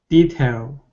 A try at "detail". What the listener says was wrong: Okay, almost. You're saying detail, and you're pronouncing an ow. You're moving your lips. Remember, the L is not a tongue movement, or sorry, a lip movement. It's a tongue movement. So it's ale.